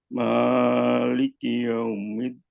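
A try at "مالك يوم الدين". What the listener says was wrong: Maknya kepanjangan. Maliki yaumiddin.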